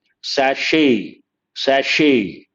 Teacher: There is no T sound, sachet, not sachet.